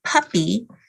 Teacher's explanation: the vocal folds are open with the p sound because it's voiceless but they have to bring the vocal folds together for the u sound then back open for the p and back together for the